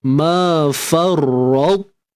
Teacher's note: Jadi ketika kita matikan ta, ma farrat, kita abaikan sifat qalqalah.